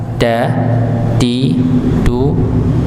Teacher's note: huruf dal tadi ujung lidah bertemu dengan gusi bagian atas